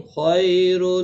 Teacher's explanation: خی یا لین ہے تھوڑا نرمی کے ساتھ کھینچ کر ادا کریں گے۔ تنوین کے بعد یرملون کا لام آئے ادغام ہوگا لیکن گناہ نہیں ہوگا۔